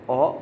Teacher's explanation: o vokal belakang sedang bundar